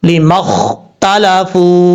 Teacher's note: کیونکہ واو ساکن سے پہلے پیش آ رہا ہے، یہی واو مدہ کی تعریف ہے، اس لیے واو مدہ کو ایک الف کی مقدار لمبا کر کے پڑھا جائے گا